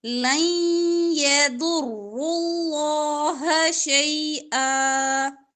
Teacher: ضاد را لام تینوں حروف موٹے ہوں گے